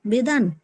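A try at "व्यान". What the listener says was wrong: বেদান নয়, ব্যান, ব্যান, বয়ে জফলা আকার দন্তন্য, ব্যান। ব্যান, ব্যান, ব্যান।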